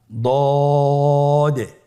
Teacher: আলহামদুলিল্লাহ, দদ হরফটিও মোটা হরফ, মোটা করে উচ্চারণ করতে হবে। দদের মাখরাজ জিহ্বার গোড়ার কিনারা সামনের উপরের 2 দাঁতের গোড়ার সঙ্গে লাগিয়ে উচ্চারিত হয়।